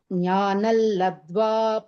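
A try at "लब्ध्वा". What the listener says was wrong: Labdha. Dha is Mahaprana. You have to stress a little bit. Labdhva param shantim.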